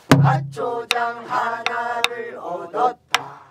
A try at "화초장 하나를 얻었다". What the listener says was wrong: 굿. 너무 잘해.